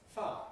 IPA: faə